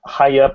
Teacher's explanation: at the end of this high eye it's in a shape very ready to say the letter y again so you just use take advantage of that and go high